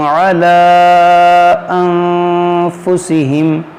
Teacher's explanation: کیونکہ نون ساکن کے بعد فا ہے، تو یہاں پر اخفا کا قاعدہ لگے گا، یعنی ناک میں آواز لے جا کر غنہ کریں گے۔